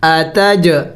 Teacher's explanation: جیم حروف قلقلہ میں ہے اور ساکن ہے، اس کو ہلا کے پڑھنا ہے، قلقلہ کرنا ہے